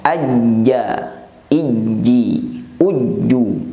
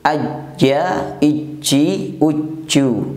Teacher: Nah, huruf jim tidak termasuk huruf hamz. Maka cara pengucapan huruf jim diucapkan dengan nafas tertahan atau tidak ada hembusan nafas.